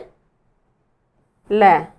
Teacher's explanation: इस शब्द का वर्ण का उच्चारण करते हैं तो हमारी जीवा उच्चारण करते समय जो ध्वनि होती है वह जीवा के साइड से निकल जाती है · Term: पार्श्विक